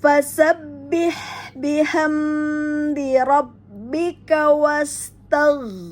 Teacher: pada gha yang ujung tenggorokan apabila dia bersukun, hati-hati tidak memantul karena pada gha tidak punya sifat qalqalah